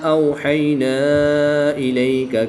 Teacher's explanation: واو ساکن سے پہلے حرف پر زبر ہے تو واو لین ہوگا، یا ساکن سے پہلے حرف پر زبر ہے تو یا لین ہوگا، ان دونوں کو بغیر لمبا کیے پڑھیں گے